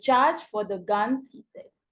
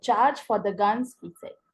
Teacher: Dactyl में क्या है, stressed followed by two unstressed syllables.